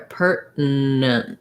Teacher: I think I do more like pertinent, where I make the syllabic N in the middle kind of long. If I'd made it short, pertinent, it would be basically like dropping that middle N, but I tend to make some length there, pertinent.